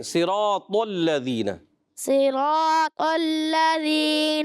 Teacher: تھوڑی غلطیاں ہیں، صاد کو موٹا کریں، طا کو موٹا کریں